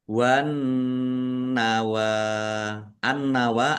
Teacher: Nun tasdid dibaca gunah atau mendengung. Ditahan biar tampak mendengungnya. W nawa wau fatta berdiri mad thobi'i panjang dua harakat.